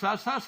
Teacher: कोई भी सा बोलेंगे आप, प्राणवायु बाहर आ रही है तो महाप्राण है